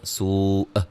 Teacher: جب وقف کریں گے حمزہ کو ساکن کر دیں گے جھٹکے کے ساتھ، لیکن قلقلہ نہیں کر رہے ہیں۔ سو، ایسے کر کے ہلانا جو ہے وہ حمزہ کو ہلائیں گے نہیں، اور یہ مد واجب ہے۔